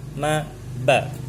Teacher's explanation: dengan merapatkan kedua bibir, yaitu ada pada huruf ma dengan ba